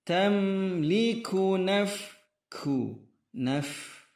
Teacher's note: ada anginnya huruf fa ketika sukun